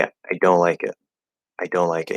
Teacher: you can actually drop that T